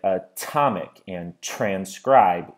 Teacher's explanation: we can hear a burst of air following the T noise when the T is part of the stress syllable or it's the first noise in a word it never has glottal reinforcements so there are two different types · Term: normal teen noises, normal T noises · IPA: /əˈtɒmɪk/ /trænˈskraɪb/